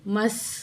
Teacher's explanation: سین کی آواز سیٹی والی ہوگی